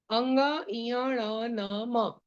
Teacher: इनको अनुनासिक व्यंजन भी कहते हैं। अनुनासिक, जो नाक से बोले जाते हैं